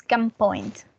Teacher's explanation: when we have an N that is followed by a p the P changes the letter n and it is pronounced not as an n Sound but as a m sound